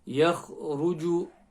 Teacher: Kha from the top of the throat and full mouth letter.